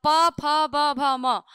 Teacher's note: जो प वर्ग होता है ठीक है उसका उच्चारण स्थान ओस्ट होता है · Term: ओष्ठ